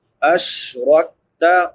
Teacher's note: را پر پڑی جائے گی کیونکہ را کے اوپر زبر ہے، کاف باریک ہوگا اور بغیر قلقلے کے ہوگا